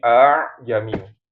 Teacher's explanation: Bagi mereka itu nggak bisa mereka aa jamiu. Makanya hamzah yang kedua itu dilembutkan.